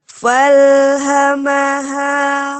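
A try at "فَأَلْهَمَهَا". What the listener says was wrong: Fa'alhamaha, bukan fal. Ulangi.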